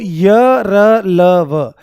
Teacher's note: य र ल व आपके सघोष और अल्पप्राण होते हैं